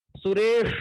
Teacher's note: स के उच्चारण में हमारी जिह्वा ताल को स्पर्श करती है